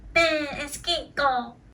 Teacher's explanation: These 3 sounds are coming from your nose. You can't say man is King Kong without your nose.